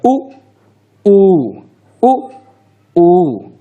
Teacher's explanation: ओष्ठ से जिसका उच्चारण होता है उसमें स्वरों में जो शामिल है वो सिर्फ उ और ऊ है